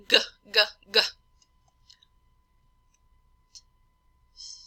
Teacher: also make the the "G" sound and what you'll feel is the body of the tongue in the back touching against the oral side of the velum